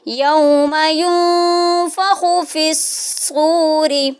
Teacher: را ساکن، را کے نیچے زیر آ رہی ہے تو اس کو باریک پڑھیں گے۔